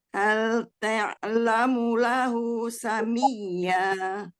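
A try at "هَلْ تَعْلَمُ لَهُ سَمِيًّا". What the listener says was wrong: Enggak, ta. Dibuka dulu. Ta, fathah ya. Ta, fathah, ta. Hal ta'lamu lahu samiyya. Samiyya.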